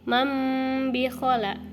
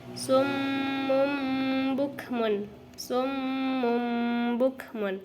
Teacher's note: mengubah nun sukun atau tanwin menjadi huruf mim dengan disertai gunnah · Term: iqlab